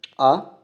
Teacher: इसमें जीभ का पीछे वाला हिस्सा ऊपर उठता है, उसे पश्च स्वर कहते हैं